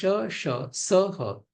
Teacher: अभी ये जो वर्ण है इनका उच्चारण स्थान श का तालु है, श का मूर्धा है, स का दंत है और ह का कंठ है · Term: उष्म वर्ण